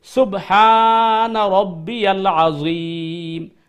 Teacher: রুকুতে এবং সেজদাতে সুবহানা রব্বিয়াল আজিম সুবহানা এটা লম্বা করতে হবে রব্বিয়াল আজিম আইনকে ওই গলা থেকে আনতে হবে আইনের প্রোনাউনসিয়েশন ঠিক করতে হবে · আইনকে ওই গলা থেকে আনতে হবে, আইনের পুরো প্রনাউন্সিয়েশন ঠিক করতে হবে, আযীম লম্বা করতে হবে।